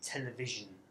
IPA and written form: ˈteləˌvɪʒən (television)